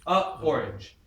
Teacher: Why? Because a cat is fine, but a orange creates a break.